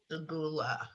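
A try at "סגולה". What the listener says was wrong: Sagula. Good.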